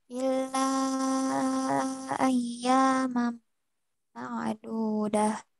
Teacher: sifat ain itu tawasut di pertengahan, tidak tidak syiddah.